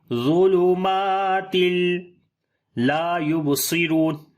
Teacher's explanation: تنوین کے بعد آگے لام آ گیا تو یہاں پر ادغام ہوگا بغیر غنہ کے